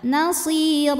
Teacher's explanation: huruf ro dibunyikan secara tafkhim karena berbaris di atas maka bacanya tebal